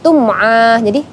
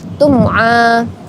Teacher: Itu dinamakan izhar syafawi karena ada mim mati atau mim sukun bertemu dengan huruf hijaiyah yaitu ain, maka dibaca tidak dengung